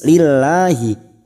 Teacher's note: lam jalalah yang sebelumnya kasrah kita baca tarqik atau tipis